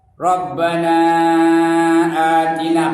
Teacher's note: panjang na tu mad jaiz munfasil boleh 2 rakaat, boleh 4 rakaat, boleh 5 rakaat